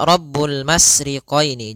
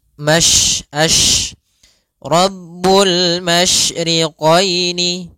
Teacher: sifat yang terkandung di dalam huruf shin, yaitu menyebarnya suara. Sehingga jangan dibaca Rabbul masriqaini, jangan dengan huruf sin, tapi dia huruf shin. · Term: tafasyi